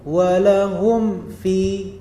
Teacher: Jadi mimnya tidak disembunyikan, tidak didengungkan. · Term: izhar syafawi